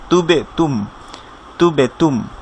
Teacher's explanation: কলকলা মানে সাউন্ডটা আপনি রিভার্ভ করবে একটু, অর্থাৎ আপনি যে জায়গায় বায়ের উচ্চারণের স্থান হচ্ছে দুই ঠোঁট, অর্থাৎ তুব, তুটা গিয়ে যখন বাকে ধরছে তুব হচ্ছে।